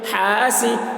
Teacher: حا سین زیر سی، سین کے نیچے زیر ہے، زیر کو جلدی پڑھیں، تھوڑا بھی نہ کھینچیں، معروف پڑھیں، مجہول آواز سے بچیں